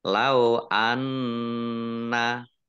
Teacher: nun tasdid, nah, dibaca gunah atau mendengung, ditahan 2 harokat